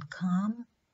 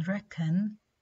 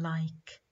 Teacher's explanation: the vocal cords don't vibrate, which means K is voiceless. It's a voiceless velar plosive.